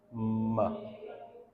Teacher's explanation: So it's a bilabial sound. Both the lips, upper lip and lower lip, are involved